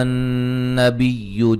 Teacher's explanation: یا پہ مد جائز ہے، نون مشدد پہ غنہ ضروری ہے